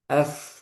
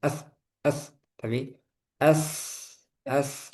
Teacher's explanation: kalau sa ini sifatnya hams, udaranya ngalir. Kalau yang tadi zal, udaranya tertahan, nggak boleh ada udara.